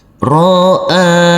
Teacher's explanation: Huruf alif harus kita baca panjang dengan panjang 2 harokat karena di atasnya ada huruf alif kecil yang berdiri tegak lurus.